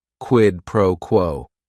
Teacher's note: if you're saying it together, the stress is kind of on that first word and that last word